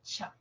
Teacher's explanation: aire canal se estrecha un poco pero no se cierra completamente en la africada primero se cierra o sea se produce una oclusión y luego se van a mantener ahí un poquito de fricción